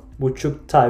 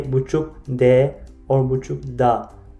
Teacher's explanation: This time we use different suffix, as you see, T-A suffix, not D-A. Because buçuk, it is ending with K consonant. It is strong consonant, then it goes with strong consonant as well.